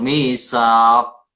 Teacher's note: Karena di akhir kata atau di akhir kalimat betul qalqalahnya kubro ya, bukan sugro ya. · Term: Qalqalah kubro